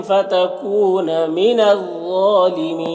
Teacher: فتکون یہاں پر واو مدہ ہے، ایک الف کے برابر کھینچیں گے، من الظالمین غا کو پر پڑھیں گے اور کھڑا زبر ایک الف کے برابر کھینچیں گے. یہاں پر یا مدہ ہے اور نون کا زبر سکون سے بدل جائے گا وقفے کی صورت میں، تو مد عارض وقفی ہوگا، تو اس طرح سے پڑھیں گے.